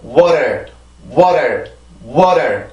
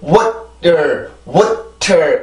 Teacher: 그래서 중요한 거는 이 발음을 할 때 절대 알 발음이 아니고요. 반드시 혀는 그 치조에 가서 이렇게 치조를 치고 빠르게 내려오는 거예요. 누르는 게 아니고요. · 그래서 water, water, water 이렇게 내려와야지 water, water 이렇게 세게 치고 내려오면 순수한 T 발음이 되는 거고 가볍게 쳐주면 이 플랩 사운드 즉 T의 약화 현상이 되는 거예요